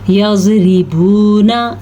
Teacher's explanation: یضربون، اب ہم نے زواد کو تو پر پڑھا ہے لیکن را کو باریک پڑھا ہے کیونکہ را کے نیچے زیر آ گئی ہے، جب را کے نیچے زیر ہو تو را باریک پڑھی جاتی ہے۔